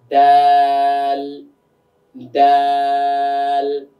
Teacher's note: জিহ্বার আগাটা গিয়ে উপরে তালুর সঙ্গে গিয়ে লাগবে।